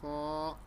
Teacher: اور ہا جو سا ہے حلق کے درمیان والے حصے سے ادا ہوتا ہے، اور خا یہ بھی حروف حلقی ہے، یہ حلق کے منہ کی طرف والے حصے سے ادا ہوتا ہے۔ خا حلق کے منہ کی طرف والے حصے سے ادا ہوتا ہے